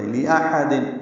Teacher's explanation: حمزہ اقصی حلق سے حا وسط حلق سے